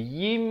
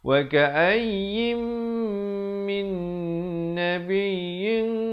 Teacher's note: bila datang mim kena masuk beserta dengung dua harakat